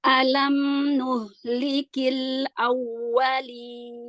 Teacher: Nun dan mim punya sifat bainiyah. Jadi alirkan sedikit, jangan ngerem.